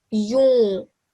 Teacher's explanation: You say it perfectly because you elongate it. However, you're giving a nasal sound. That means it's a mistake.